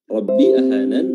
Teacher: Rabbi huruf ra-nya tafkhim tebal.